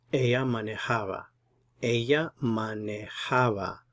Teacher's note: We're putting the stress here, second to the last syllable. Manejaba. That's the normal stress for a word that ends in a vowel.